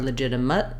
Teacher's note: I can use the sound, the schwa here, or the I sound is a reduced vowel, again, in that shortened, unstressed syllable.